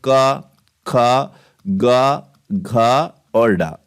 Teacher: पहला और दूसरा अघोष होगा तीसरा चौथा पांचवा ये आपका घोष होगा